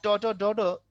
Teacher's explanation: তালুর যে উঁচু অংশটা উপরের পাটির দাঁতে, ওই উঁচু অংশের নাম হচ্ছে মূর্ধা, তাই এই বর্ণগুলোর নাম মূর্ধা বর্ণ